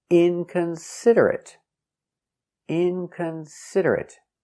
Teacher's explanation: Five syllables. Inconsiderate. Stress on the first syllable and third syllable.